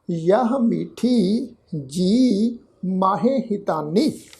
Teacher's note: जजे अखर नूं लगी हुई बिहारी की मात्रा नूं असीं लमका के पाठ उच्चारण करांगे क्योंकि ऐड़ा अखर जिहड़ा है वो बिहारी की मात्रा नूं लमका वास्ते गुरु साहिब जी ने इत्थे लगाया है।